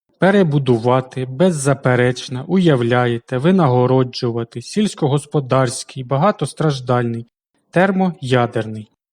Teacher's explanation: у багато складових словах крім основного є ще й побічні наголоси які розташовуються через один чи два склади від основного